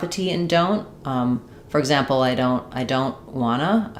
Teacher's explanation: we might drop the T in don't.